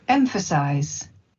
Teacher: The first syllable is stressed, the second syllable is an unstressed syllable pronounced as a schwa, and the third syllable has a secondary stress.